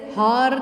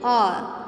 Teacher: मतलब एच से हार नहीं बोलते, हम बोलते आर